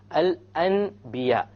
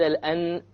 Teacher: instead of pronouncing the N sound, you pronounce the M sound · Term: iqlab